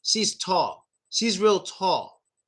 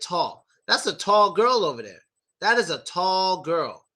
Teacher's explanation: the way we say it as native speakers, we kind of make a W sound a little bit, like the first 25% of a W sound